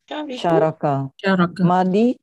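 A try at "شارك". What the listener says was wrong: Syaraka panjang. Kan ada alif. Alifnya di mana? Setelah fa'il.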